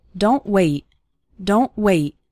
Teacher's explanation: two more examples of a t- sound at the end of a word sounding just like a sudden stop